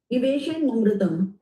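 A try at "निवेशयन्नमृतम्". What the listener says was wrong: Niveshayan Namritam. I was explaining Niveshayan followed by A becomes the na. There is a double N. So one N is half. Niveshayan. Then the second N plus A becomes na.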